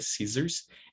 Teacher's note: And it's pronounced Z. Scissors, double S in the middle, it's pronounced with voicing, right? Scissors.